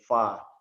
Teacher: Fa itu terjepitnya gigi seri atas dengan bibir bawah.